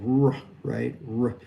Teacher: the tongue is kind of down in front. It goes up near the pallet and then down and we vocalize it. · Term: R sound